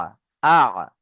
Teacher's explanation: আ, আওয়াজটা গলার মাঝখান থেকে আসবে, কণ্ঠনালীর মাঝখান থেকে। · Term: আইন